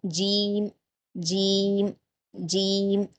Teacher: जीम के मखरज को जो मैंने बताया जबान के बीच वाले हिस्से को तालू के ऊपर के तालू के बीच वाले हिस्से से मिलाते हुए अदा करेंगे